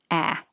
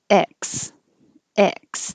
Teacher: itself it sounds like e the vowel is e like head if your jaw is too open ah it'll sound like axe so keep your jaw more high x x the vowel is e like head